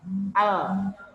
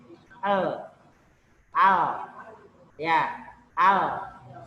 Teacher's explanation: Al, ujung lidah bertemu dengan langit-langit. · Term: lam